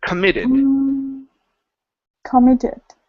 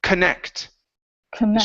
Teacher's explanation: stress is on the end of the word